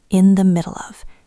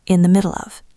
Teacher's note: Pay attention to the linking. In the middle of. It sounds like one long word.